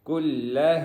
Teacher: یہاں پہ جو ہا ہے وہ سینے والی ہے، حلق والی نہیں ہے